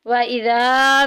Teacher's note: وَإِذَا میں الف پیچھے زبر، الف مدہ کا قاعدہ جاری ہو رہا ہے، ایک الف کے برابر لمبا کریں گے